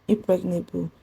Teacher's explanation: Then impregnable is stressed on PRE.